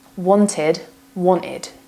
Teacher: Wanted becomes wan'id.